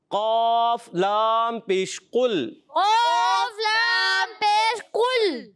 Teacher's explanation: قاف کی ادائیگی ہوتی ہے زبان کی جڑ اور تالو کے نرم حصے سے قاف ادا ہوتا ہے